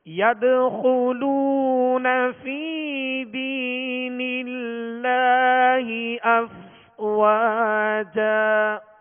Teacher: یا مدہ ہے اور دینی اس میں بھی یا مدہ ہے تو دو حرکت یعنی ایک الف کی مقدار کھینچیں گے اور دراز کر کے ادا کریں گے